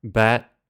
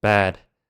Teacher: when you say bat it's a very quick and short word but when you say bad b a d you have to drag out the word so that everyone can hear the D